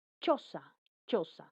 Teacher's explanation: La lengua toca el paladar duro o se acerca a él. Son la Y, la C, la N y la L. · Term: Palatal